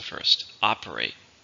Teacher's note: So operate is a verb. How many syllables are in operate? 3, stress on the first,